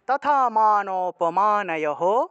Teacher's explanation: অপমান স্পষ্ট করে শুদ্ধ করে উচ্চারণ করব তাহলে তথা মান অপমানহ বিসর্গ থাকায় হ উচ্চারণ আর আগের অক্ষরের সাথে একটা অকার থাকায় সে অকারটা হ এর সাথে যুক্ত হবে